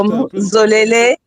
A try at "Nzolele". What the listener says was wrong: Mas a primeira pessoa leva sempre o ditongo nasal, né? Nzolele.